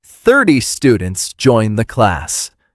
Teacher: In 30, the strong beat is on the first part.